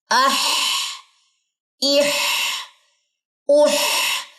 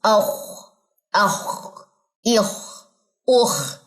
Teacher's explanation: گلے کا درمیان یوز ہوگا، وسط یوز ہوگا